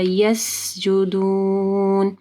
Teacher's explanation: سین کے اوپر رخوہ ہوگا یعنی سٹریچ کرنا تھوڑا